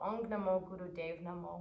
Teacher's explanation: when you say Ong, you'll bring the tongue to the soft palate of the roof of the mouth, and you'll, when you chant that, you'll feel a vibration, generally here at the third eye point.